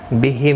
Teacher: میم ساکن ہی رہے گا وقف کی صورت میں، ملانے کی صورت میں اظہار شفوی ہوگا